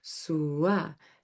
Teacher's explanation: You're going from obstructed airflow sound to a glided airflow sound.